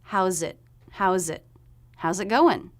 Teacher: it going so we're contracting how is how's house so just put a z sound there at the end of how the next word begins with a vowel so the z should link those two words together